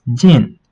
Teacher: So this gin is a falling tone